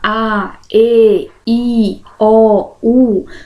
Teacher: gente fala a e i o u vocês vão notar aqui não tem a interrupção desse ar pelo dente ou pela pelos lábios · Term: vogais